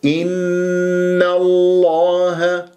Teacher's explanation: إن لا إي، إن الله نون مرققة، نون الثانية مفتوحة قبل اسم الجلال الله، تفخم اللام من اسم الجلال الله، لكن لا أفخم النون. إن الله لا، إن الله ولا أكور الشفاه.